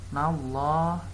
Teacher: Nallah ini adalah lam jalalah tafhim atau dibacanya tebal.